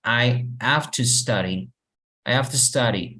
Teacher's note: Y el to, de hecho, suena más como si fuera ta.